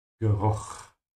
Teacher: Make sure to open your mouth here on the CH and make a vibration in the back of your throat, because it comes after a U.